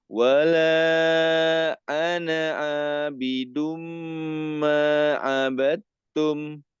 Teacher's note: Ada tasdid huruf mim, gunnahnya dipanjangkan.